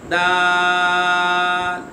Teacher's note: دال، اسے کھینچیں گے کیونکہ مد لازم ہو رہا ہے، یہ مد بھی بنا ہوا ہے، دال۔ اچھا، یہ زبان کی نوک اور اوپر کے دانتوں کی جڑ سے ادا ہوگا